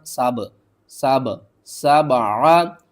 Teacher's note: إلى السماء فسواهن، سین با زبر سب، عین زبر ع، سبع، با کے اوپر آپ نے قلقلہ کرنا ہے، با کو تھوڑا سا آپ نے ہلانا ہے